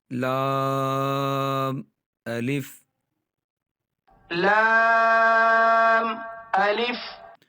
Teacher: لام پڑھتے ہوئے آپ نے نون کی آواز جو ہے ناک میں نہیں آنے دینی